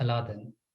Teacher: In the Anglophone world, or even for those like myself who grew up watching Disney cartoons on Doordarshan of all places, the name Alauddin has been made famous by this character, where the oo sound of the possessive construction has been further dropped so that you just have Aladdin